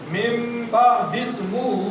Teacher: نون ساکن کے بعد با آ گئی چھوٹی میم ڈالیں گے ہونا بھی کریں گے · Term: اقلاب